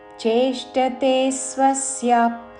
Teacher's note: విసర్గ ఉచ్చారణ శ్వాస వదులుతూ ఫ లాగా